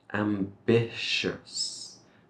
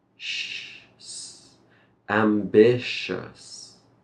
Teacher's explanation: Motivated or ambitious. So this TI sound will give us a sh, ambitious. And then we finish it with a s, sh, s, ambitious.